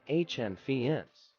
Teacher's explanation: with the emphasis on the first syllable hand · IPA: /ˈhændˌkʌfs/